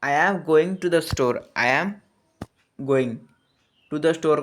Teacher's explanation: neutral tone when giving information or instructions typically falls at the end of the last word or syllable in the phrase